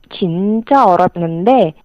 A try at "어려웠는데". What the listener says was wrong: 어렵는데. That's what it sounded like. If you can enunciate every syllable a little more, 어려웠는데. 5 syllables. That would, yeah, that would be better. 어려웠는데.